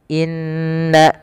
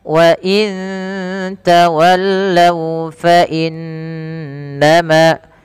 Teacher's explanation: inna ditahan suara bunyi n-nya sepanjang 2 harakat karena ia bacaan gunnah. Beberapa kesalahan yang terjadi tidak menahan gunnahnya, hanya lewat saja.